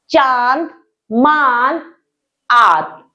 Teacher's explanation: कुछ शब्दों पर आपने चंद्र बिंदु लगा देखा होगा, तो यह चंद्र बिंदु अनुनासिक कहलाता है। अनुनासिक में श्वास नाक व मुख दोनों से निकलती है